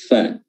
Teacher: huruf fa, pertemuan antara bibir bagian bawah dengan gigi atas, gigi seri atas